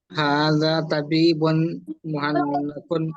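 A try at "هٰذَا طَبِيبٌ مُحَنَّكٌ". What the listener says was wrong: हाँ माशाल्लाह, बहुत अच्छा।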